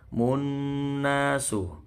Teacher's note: Qafnya tebel ya, yaqu panjang mat tabi'i, munnasu. Non bertasydid, ini bacaan gunnah dengung sekitar 3 ketukan atau 3 harokat.